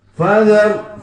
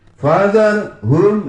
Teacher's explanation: itu ra sukun jatuh setelah harokat fathah, bacanya tafkhim ya.